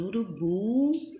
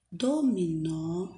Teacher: ela é oxítona quando a sílaba tônica é a última